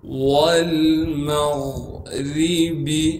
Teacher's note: واو کو لام ساکن سے ملائیں گے اس لیے کہ لام ساکن ہے